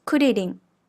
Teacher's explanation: the tip of your tongue lightly touches or flaps the gums behind the back of your front teeth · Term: “r” sound in Japanese